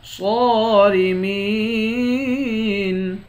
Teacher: صاد کو موٹا بھی پڑھیں گے، ایک الف کے مقدار کھینچ کر بھی پڑھیں گے